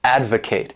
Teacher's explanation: This word has 3 syllables and the stress is on that first syllable, advocate. And to advocate means to show strong support for something.